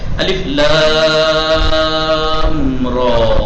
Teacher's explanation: الف لام کو دیکھو کیسے کھینچ رہا ہے، الف اور را کو نہیں کھینچ رہا ہے